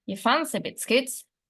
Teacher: The nuclear stress is placed on the word fancy